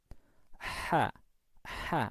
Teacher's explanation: ketika mengucap ha, epiglotis ini itu dipepetkan ke dinding tenggorokan.